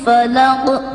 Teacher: tepatnya pada huruf Qa, akan dibaca memantul karena Qaf merupakan salah satu huruf qalqalah, yang mana ketika kita membaca huruf qalqalah maka bacaannya harus dipantulkan.